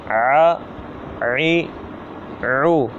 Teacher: عین جو ہے یہ بھی حا کی طرح حلق کے درمیان والے حصے سے ادا ہوتا ہے